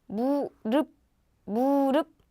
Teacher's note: Again, you don't hear p sound, right? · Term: 받침